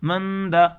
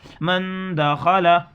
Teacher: نون ساکن کے بعد دال آ رہا ہے جو حروف اخفا میں سے ہے، اس لیے ناک میں چھپا کر پڑھیں گے اس کی آواز کو